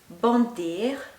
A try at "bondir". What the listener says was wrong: Not exactly O. Bondir. Bondir. On. No. The on sound. you've got bondir, tomber, pondre, on, téléphoner. Yeah.